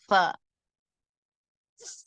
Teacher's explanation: மேல் பல்லின் ஓரம் கீழ் உதட்டின் ஈரமான பகுதியில் இணைந்து காற்றை வெளிப்படுத்தும் போது உண்டாகும்.